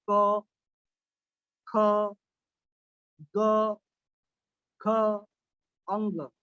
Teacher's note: क वर्ग का भी उच्चारण स्थान कंठ है। आप बोल के देखिए कभी, तो आपको पता चलेगा कि इसका उच्चारण हमारे कंठ से होता है।